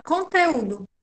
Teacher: Conteúdo, apesar de ter acento, não é proparoxítona, porque o acento está na penúltima sílaba